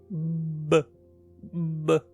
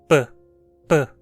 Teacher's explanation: Como nessas consoantes a passagem de ar é completamente fechada, não podemos alongá-las como no exemplo anterior, mas ainda dá para perceber um gemido que acompanha um B. B, B, mas não um P.